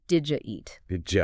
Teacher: The D and the Y sounds, they just smash together to make a jut sound. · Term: connected speech